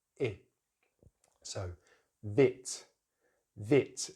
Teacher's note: So in British English, it's just the short vowel sound, I, which you see my lips completely relaxed, tongue slightly forward in the mouth, jaws only open a little bit